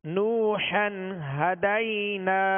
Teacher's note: یہاں واو مدہ ہے، اور واو مدہ کو ایک الف کی مقدار میں کھینچ کر پڑھیں گے